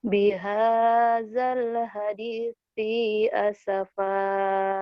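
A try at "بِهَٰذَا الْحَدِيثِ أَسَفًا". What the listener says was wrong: Kenapa sihnya panjang? Bihadzal hadisi cadal, cadel, cadal ya. Hadisi asafa. Tapi jangan ditekan. Bihadal hadisi asafa, jangan ada jeda. Nyambung. Biha bihadal hadisi si asafa segera ya. Nyambung.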